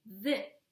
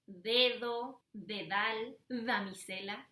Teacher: In Spanish, we usually say the with our tongue between our teeth.